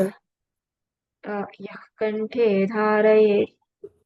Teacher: after visarga there is ka, so the visarga will be pronounced as half ha.